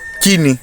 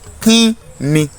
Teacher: Dípò ìró fáwẹ́lì àìránmúpè tó gbẹ̀yìn kí, ẹ lè sọ di fáwẹ́lì aránmúpè ín tí yóò di kín ni.